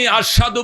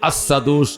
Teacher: শিনটা সিনের মতো উচ্চারণ হইতো